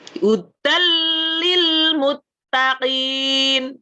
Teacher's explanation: Jadi huruf nunnya sudah tidak terdengar tapi tanpa dengung. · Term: idgham